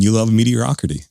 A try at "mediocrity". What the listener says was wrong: You said meteorocrity as